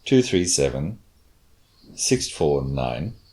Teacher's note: one of our fall was this falling ination at the end so it's a grouping but it's a little fall at the end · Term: falling intonation